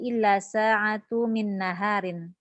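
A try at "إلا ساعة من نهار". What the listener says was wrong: Tanwinkan?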